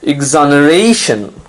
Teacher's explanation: you have to stress on the second last syllable the syllable right before tion